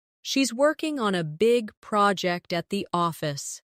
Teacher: Stress, working, big, project, and office.